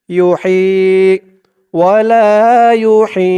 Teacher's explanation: হার উচ্চারণটা গলার ভিতর থেকে চিকুন হয়ে বের হবে